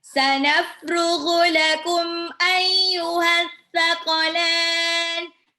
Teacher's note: coba ghoinnya agak di ru, bukannya gu, tapi ru, agak ngorok dikit.